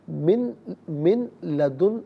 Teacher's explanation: من میں نون ساکن ہے، اسے لام کے ساتھ ملائیں گے، لام کی آواز کو ادا کیا جائے گا